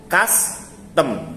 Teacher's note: Stressed schwa being more open than unstressed schwa. For example, the two vowels in custom. Sebenarnya ini kalau yang strong dia dibaca gini, yang pakai simbol samping, custom.